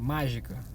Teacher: Quando essa sílaba tônica tá no começo da frase, por exemplo, mágica, sílaba tônica, tá na primeira sílaba, é uma proparoxítona